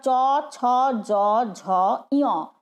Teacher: তালুকে স্পর্শ করেই আমরা চ ছ জ ঝ ইয় উচ্চারণ করি। সেই জন্যে এটাকে বলে, এই 5টা বর্ণকে বলে হচ্ছে তালব্য বর্ণ, যেহেতু তালুকে স্পর্শ করে এগুলো উচ্চারিত হয়, জীব ওই তালু স্পর্শ করছে।